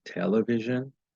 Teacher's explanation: it puts stress on the first syllable · the last syllable receives no stress television those drops down her voice drops in pitch and wanting